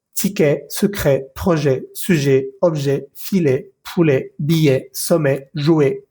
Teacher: esa E va a sonar como una E en español, pero un poquito con la boca un poco más abierta.